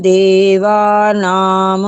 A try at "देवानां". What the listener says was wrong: पूरा नहीं है, देवा नाम ठीक है, नाम नहीं की जरूरत नहीं है, क्योंकि यहाँ अनुस्वार है, आधा माँ है, माँ हलंत होता है ना।